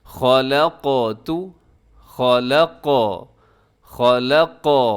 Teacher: یہاں پر جزم کی وجہ سے ہم حروف قلقلہ قاف کو ہلا رہے ہیں